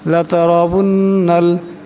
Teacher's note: নুন মুশাদ্দাদকে একালে পরিমাণ গুণনা করিয়া পড়তে হবে। আবার এই নুন এই লামকে ধরবে।